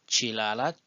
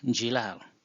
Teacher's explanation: we normally drop the ch sound and change it to j sound. Chilala turns to jilal.